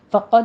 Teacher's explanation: پڑھنی ہے، حون میں تنوین کا قاعدہ اخفا حقیقی کریں گے، فقد میں قوف کو پر پڑھنا ہے، دال کے اوپر قلقلہ کرنا ہے